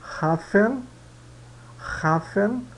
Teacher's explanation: no começo da palavra alemão o h ele é gutural